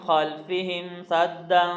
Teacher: یہاں پہ ہم غنہ کر رہے ہیں اس لیے کہ فا ہے، فا حروف اخفاء میں سے ہے